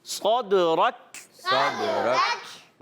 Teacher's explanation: صرف 5 حروف ایسے ہوتے ہیں کہ جب ان کے اوپر یہ جزم آتی ہے قلقلہ والے تو ان میں جنبش یا حرکت ہوتی ہے کہ آواز لوٹ کر آتی ہے، واپس آتی ہے، جیسے صدرک، صدرک، کلکلا ہوا۔ صاد کو موٹا رکھیں گے، را کو بھی اور کاف کو باریک